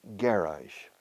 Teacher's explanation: You stress the first syllable.